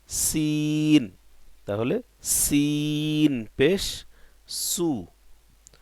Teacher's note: আর সিন নিচের দুই দাঁতের গোড়ার সঙ্গে জিব্বার আগার কিনারা লাগায়া কি উচ্চারণ হয়?